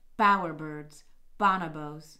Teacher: bower birds and bonnebos in particular are in that class of multi-syllable words that don't have a really pronounced secondary stress